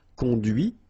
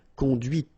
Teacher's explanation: final T is not pronounced